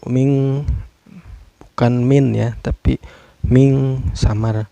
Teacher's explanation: Hukumnya ikhfa karena ada nun sukun bertemu dengan huruf ikhfa yaitu shin ya. Cara bacanya ikhfa ini samar sambil dengung.